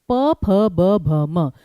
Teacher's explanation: ठीक है, पूरा का पूरा प वर्ग, प, फ, ब, भ, म, दोनों होंठों का प्रयोग है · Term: ओष्ठ